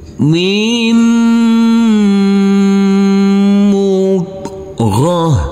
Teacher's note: Huruf tak marbutoh karena kita wakofkan maka berubah menjadi huruf ha.